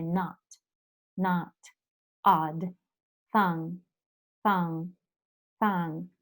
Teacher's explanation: you are going to say ah but actually you say oh